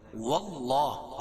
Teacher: داللہ اللہ کے لام سے پہلے زبر یہ پیش ہو تو اللہ کا لام پور پڑھا جائے گا